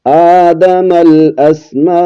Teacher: مد متصل ہوگی، 4 الف کی مقدار تک لمبا کریں گے